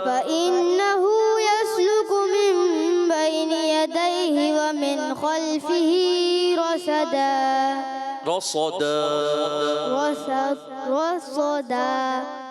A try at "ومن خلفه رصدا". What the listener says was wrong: صاد موٹا کرنا ہے پیارے بچے کیسے ومن خلفه ومن خلفه رصدا یہ ومن خلفه رصدا